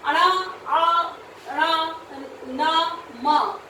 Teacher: वर्ण के जिनके जब भी हम उनको उच्चारित करते हैं तो उनके उच्चारित करते समय नाक से ध्वनि निकलती है, उन्हें हम अनुनासिक कहते हैं